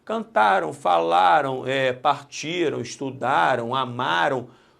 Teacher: Repare que cantaram, se eu tirar o M e botar tio e O, vai ficar cantarão. Então, este M, cantaram, representa foneticamente, no som, um O, aqui representado pelo W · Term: ditongo fonético